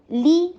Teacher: لام کے نیچے کسرہ, ای کی ساؤنڈ, لی بولنا ہے, لے نہیں, لے بعضن نہیں بولنا.